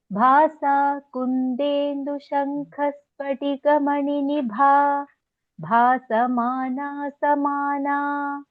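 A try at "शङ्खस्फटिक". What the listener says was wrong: Okay, just a small correction. When there are two Mahapranas next to each other, almost both have to be pronounced. Shankha Spatika. Ha is also Mahaprana.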